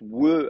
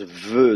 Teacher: Il se prononce we à l'époque. Aujourd'hui, on le prononce ve, donc comme une labiodentale.